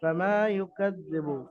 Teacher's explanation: ফামা ইউকাযযিবু, ফামা আলিফের ডান দিকে মিমের উপরে জাবার আছে, আলিফ মাদ্দা অর্থাৎ মিমকে এক আলিফ পরিমাণ টান দিয়ে পড়তে হবে